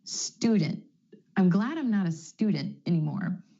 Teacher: My tongue stays up for the T sound after the N. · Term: held T